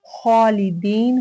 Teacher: खा की वजह से अलिफ पुर अदा किया जाएगा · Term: तफ़ख़ीम